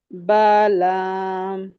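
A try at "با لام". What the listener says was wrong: बा, बा को भी थोड़ा सा स्ट्रेच करें। बा लाम।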